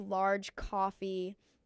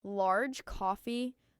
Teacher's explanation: Link the G in large to coffee so it flows